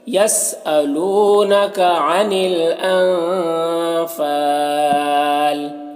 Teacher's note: نون میں اخفا ہو رہا ہے، نون کے بعد اس کو ناک میں چھپا کر پڑھیں گے، فا میں الف مدہ ہے، 1 الف کے برابر کھینچیں گے۔